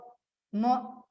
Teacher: म ओष्ठ्यवर्ण आहे, ओठ बंद होतात